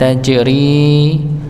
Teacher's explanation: Tajri dipantulkan huruf jimnya karena dia sifat pada huruf jim ketika sukun, yaitu qalqalah, maka dipantulkan tajri.